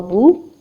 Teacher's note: با پیش واو بو، 2 حرکت لمبا کرنا ہے، اور آف کورس جب ہم وقف کریں گے نون پر آیت کو سٹاپ کریں گے تو ہم نے 6 حرکت تک طول دینا ہے، جو کہ افضل ہے۔